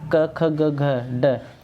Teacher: ये हमारे कंठ होते हैं, इनको हम कंठ की सहायता से बोलते हैं